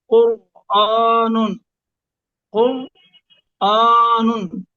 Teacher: ایک ہے قر نہیں، قر. را کو پر کرنا ہے زبان کو اوپر اٹھا کر تالو کی طرف.